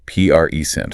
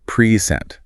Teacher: First syllable stress versus present the verb like to give something. Present second syllable stress. Big difference in meaning just from stress.